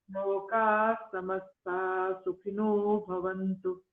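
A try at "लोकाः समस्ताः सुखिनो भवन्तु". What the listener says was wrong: So lokas samasta, there are two S's there, two sakaras there sitting next to each other. So we must emphasize the sakara. Lokas samastas sukhino bhavantu. Okay, so we are emphasizing the S there, correct? Lokas samastas sukhino bhavantu.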